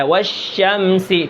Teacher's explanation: استفال اور انفتاح، یہ 2 صفات باریکی کی ہیں، تو یہ شین جو ہے یہ باریک ہوتا ہے